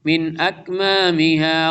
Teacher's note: نون ساکن کے بعد حمزہ آ رہا اظہار ہوگا